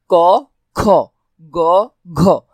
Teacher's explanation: তাহলে ক অল্পপ্রাণ খ মহাপ্রাণ গ অল্পপ্রাণ ঘ মহাপ্রাণ